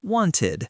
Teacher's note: And for some verbs, like want, it sounds like id, wanted.